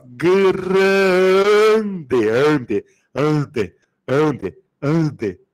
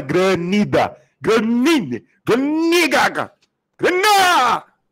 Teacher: O N não é pronunciado, caramba. O que o N faz, então? Ele é só um sinal de nasalização.